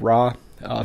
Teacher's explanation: the Japanese R is somewhat between an English R and an L sound. And it almost could be like a very soft D, like when you have words like ladder.